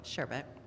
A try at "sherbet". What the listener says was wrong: There's no R. It's sherbet. No, there's sorbet's different. sorbet, but if you look at it next time you go to the store, there's no R. It's sherbet. people say sherbet.